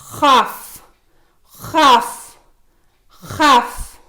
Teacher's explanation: இது நாவின் கடைசியில் இருந்து உள்வாயின் மேல் பகுதியில் இருந்து உச்சரிக்கப்படுகிறது